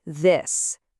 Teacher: You feel that buzz, that vibration. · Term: voiced sound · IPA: /ð/